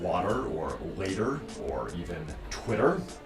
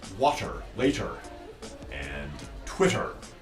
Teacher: pronounce soft t sounds more like d's